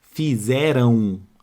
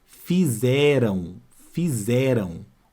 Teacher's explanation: este M aqui ó ele tem som de u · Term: ditongo